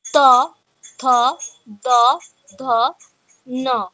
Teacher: ত বর্গের উচ্চারণ স্থান দন্ত